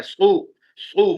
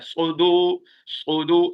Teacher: صاد کو موٹا کرنا ہے, سو سو منہ بھر کے پڑھنا ہے, سدو سدو, سودو نہیں پڑھنا ہے, سو سین نہیں پڑھنا ہے, صاد پڑھنا ہے, صاد کو موٹا کرنا ہے.